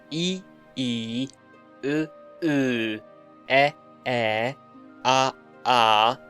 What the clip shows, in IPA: i, i:, ɤ, ɤ:, e, e:, a, a: